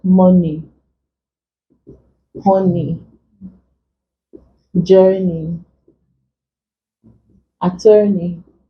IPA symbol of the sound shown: ɪ